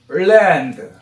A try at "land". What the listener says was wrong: 그냥 land 이러면 안 돼요. L자 발음. 거의 을랜드 이런 느낌을 해야 돼요.